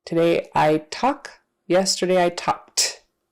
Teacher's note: we're going to pronounce that Ed with an unvoiced consonant like T